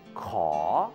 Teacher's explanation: Kaw is the consonant sounding like a K or K, and it rises when you say it.